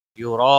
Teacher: مد متصل لگتی ہے، اس کو 5 الف کے برابر کھینچ کر پڑھتے ہیں